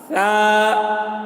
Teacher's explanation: سا کا مخرج ہے زبان کی نوک اور آگے کی دانت، سامنے کی جو دانت ہوتی ہے وہاں پر زبان کی نوک کو لگانے سے سا ادا ہوتا ہے۔ سا، دیکھیے آواز، اگر سا بول دیے تو یہ غلط ہو گیا، سا نہیں بولیں گے، سا، سا، یہ سا کی آواز ہے، سا، اس طریقے سے۔